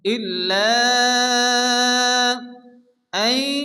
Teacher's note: হরফে মাদের পরে হামজা দ্বিতীয় শব্দের শুরুতে আসছে মাদ্দে মুনফাসিল চার আলিফ টেনে পড়তে হবে।